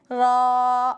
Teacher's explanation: را زبان کی نوک کمر کی طرف اوپر کے تالو سے مل کر ادا ہوتا ہے، یہ ہے زبان کا اوپر والا حصہ और यह है जबान का नीचे वाला कमर की तरफ का हिस्सा। तो ये जबान मोड़कर नोक की कमर की तरफ का हिस्सा ऊपर के तालू पर लगाएंगे और अदा करेंगे र। · र जबान की नोक कमर की तरफ ऊपर के तालु से मिलकर अदा होता है।